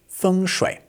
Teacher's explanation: A lot of Westerners might call this feng shui or feng shway or something, but actually it's pronounced feng shui. The first tone and then the third tone